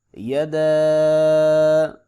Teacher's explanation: یا زبر یا، دال زبر الف مد دا، یدا، درمیانی مد ہے، اس کے بعد حمزہ ہے، لہٰذا اس کو 3 الف کے برابر لمبا کریں گے